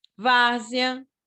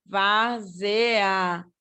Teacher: O E está mais fraquinho do que o A. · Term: ditongo crescente